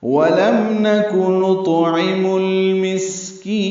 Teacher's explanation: نطعم میں تو ساکن ہے اور اس پہ قلقلہ ہے